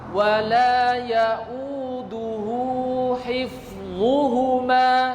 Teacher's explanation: Jangan dibaca pendek. Wala ya'uduhu hifdhuhuma, tidak. Tapi dibaca 2 harokat. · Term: mad silah sughra